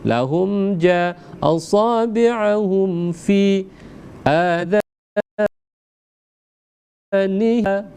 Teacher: Izhar syafatun, jelas dengan kondisi kedua bibir yang tertutup. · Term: izhar syafawi